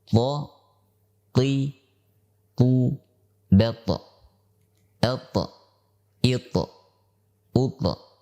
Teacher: makhraj daripada huruf ta adalah ujung lidah yang bertemu dengan pangkal gigi seri atas